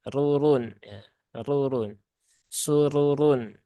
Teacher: Jadi sinnya tipis ya, kemudian roknya dua itu tebal semua. Jadi jangan dibaca sururun.